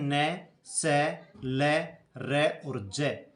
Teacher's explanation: मसूड़ा के स्पर्श करने से बोले जाते हैं, इसलिए इनको व्रस्य वर्ण कहा जाता है।